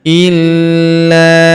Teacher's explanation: Faintahau fala udwana illa. Huruf la kita tahan dan kita tekan karena terdapat tanda tasdid di atasnya.